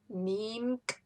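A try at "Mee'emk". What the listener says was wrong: No, it has an MK at the end.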